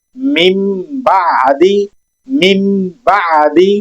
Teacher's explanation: ہم یہاں پر اس میم کو ادا کریں گے، نون کو نہیں پڑھیں گے، میم، میم، من نہیں کہیں گے، من بعدی، من بعدی۔